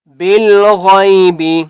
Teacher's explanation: غین کو بھی ہم نے موٹا کر کے پڑھنا ہے، ٹھیک ہے، پر کر کے پڑھنا ہے۔